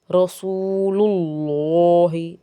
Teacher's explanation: اللہ تعالیٰ کے جو نام کا لام ہے اس سے پہلے پیش آئے تو بھی اس کو پر پڑھیں گے